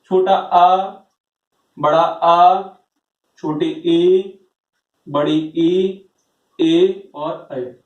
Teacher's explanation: अव्रतमुखी के अंतर्गत वो स्वर आते हैं जिनके उच्चारण में हमारा जो मुख है वो वृत्त के समान गोल नहीं होता, तो बाकी के जो स्वर बचते हैं वो हमारे अव्रतमुखी के अंतर्गत आते हैं।